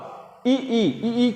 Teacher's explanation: तालब्य से क्या बोला जाता है, तालब्य मतलब दोस्तों तालु के ऊपर वाला, ई करेंगे तो जीभ हमारा तालु छुएगा, जीभ हमारा तालु में छूने का मतलब ई बोलने पर यह तालु से बोला जाता है।